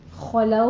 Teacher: خلو میں خو کو پر پڑھنا ہے، لو میں دونوں ہونٹوں کو ناتمام گول کرتے ہوئے واولین ادا کرنی ہے